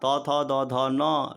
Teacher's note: ऋतुलसानाम दंताः ऋकार का तवर्ग का त थ द ध न लकार का और सकार का उच्चारण स्थान दंत है